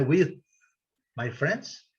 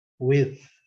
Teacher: Esse TH é com a língua entre os dentes, né? E um sopro, né?